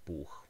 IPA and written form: buːx (buch)